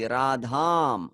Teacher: Radha in the second case singular will be Radham with a long A.